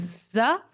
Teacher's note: जा बोलते वक्त चारों दांत बंद है। जबान की नोक दांतों के किनारों को पीछे से टच कर रही है। हल्की बहुत ज्यादा भी टच करके वहां रखनी नहीं है। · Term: बजिंग साउंड